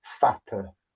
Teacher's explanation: Look, it's pronounced much how it's spelt, except rather than a D, it's a big fat T. Fata. Put your tongue behind your teeth.